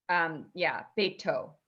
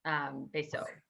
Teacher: In the Sephardic pronunciation, it's always a hard T. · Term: hard T sound